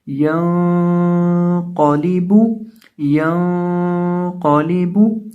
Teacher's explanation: ہم نے یہاں نون کی آواز کو ظاہر نہیں کیا، یعنی نون کی آواز کو ہم نے ناک میں چھپا کر پڑھا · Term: اخفا